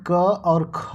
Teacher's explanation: कंठ ध्वनियां जो कंठ से निकलती हैं यानी क और ख जो होती हैं ये कंठ ध्वनियां होती